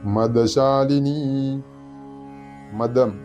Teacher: തൊണ്ട ചേർക്കാതെ ഉച്ചരിക്കേണ്ട ദയാണ്